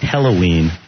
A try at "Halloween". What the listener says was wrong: Hello. It sounds like hello, not hell-oween.